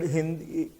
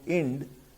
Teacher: The word Sindhu became Hind, and the word Hind turns into Ind because the aspirate Ha is missed and is made an inaspirate sound by the replacement of the H sound by the vowel sound. So He becomes E, and therefore the word Hind has become Ind.